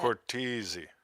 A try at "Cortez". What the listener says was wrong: There's no E after it. Cortez on Facebook.